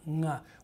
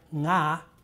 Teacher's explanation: a velar nasal, the ng sound, nga, which is all over English, but it's never at the beginning of a word